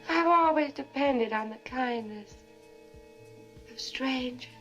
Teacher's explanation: You hear how there's no R in strangers? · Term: non-rhotic accent